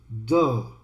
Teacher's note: The in THE, since the next word starts with a consonant, the E becomes a schwa.